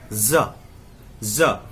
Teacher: इसको बोलने के लिए ज देखिए दांत के पास आएगा, ज यानी दंत मूल, जो दांत का मूल है नीचे, हम वहां जी को सटा देंगे, ज।